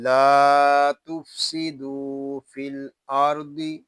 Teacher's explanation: لام کو ہم ایک الف تک کھینچ کر پڑھیں گے کیونکہ یہاں الف مدہ ہو رہا ہے۔